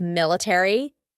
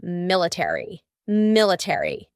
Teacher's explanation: In British English, they often cut out the A, so instead of military, it would be military, military.